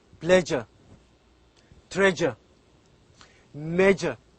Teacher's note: not say s we pronounce it as j pleasure treasure major so this this sound is a voiced sound and also it is a palatal sound